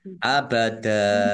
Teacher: Abada fathah tanwin, fathah tanwin alif karena wakof dibaca fathah dan panjang 2 harokat. Namanya mat aiwad.